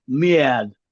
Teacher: in the US it can be almost a diphthong, mad